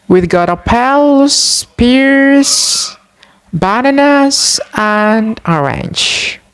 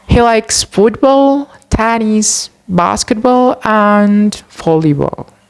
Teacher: intonation falls on the last item to show that the list mentioned is finished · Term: combining intonations in list